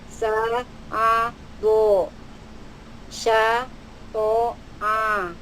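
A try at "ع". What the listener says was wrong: Ini masih hidung nih.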